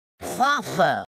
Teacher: I brought my tongue tip way too far back instead of aiming for the bumpy spot. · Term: slushy